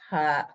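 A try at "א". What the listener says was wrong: Not a ha. There's no sound to that aleph. ah.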